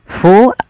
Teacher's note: alirkan nafas sifat hamasnya mengalirnya nafas